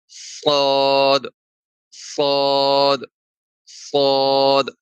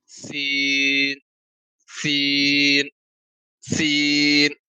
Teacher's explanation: تو یہ تینوں حروف سیٹی کی آواز سے ادا ہوں گے، اور زا کو سختی سے ادا کریں گے اور سین کو قدرے کم سختی سے ادا کریں گے، جبکہ صاد کو بالکل نرمی سے ادا کریں گے اور پر کر کے موٹا کر کے پڑھیں گے. سین کو باریک کر کے پڑھیں گے